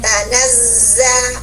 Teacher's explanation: huruf zai menempati tingkatan sopir yang paling di atas kubro karena berdesis tanpa mengeluarkan napas angin atau udara